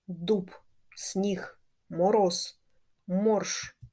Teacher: дзвінкі приголосні у кінці слова вимовляються чітко дуб сніг Мороз морж дзвінкі приголосні у кінці слова не оглушуються